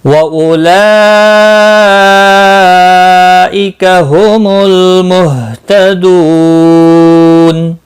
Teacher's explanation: وقف بالاسکان ہوگا، 3 سے 5 سیکنڈ کھینچ کر وقف کریں گے۔ وَأُولَئِكَ هُمُ الْمُهْتَدُونَ۔ · مد متصل ہے، 4 الف کے برابر کھینچ کر پڑھیں گے